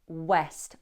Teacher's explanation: Number one, west, with a w, rounded lips.